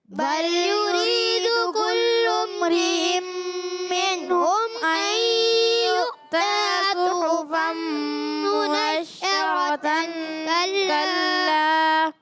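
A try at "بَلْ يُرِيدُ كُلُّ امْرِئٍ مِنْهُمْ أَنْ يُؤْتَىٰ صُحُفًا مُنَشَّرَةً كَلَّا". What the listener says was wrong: تھوڑا سانس ٹوٹ گیا ہے, کوئی بات نہیں, کوشش کرتے رہیں گے بہتر ہو جائے گا, ٹھیک ہے.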